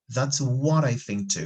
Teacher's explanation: here so be careful with linking that's what i think too here we are using flapping which is very common in american english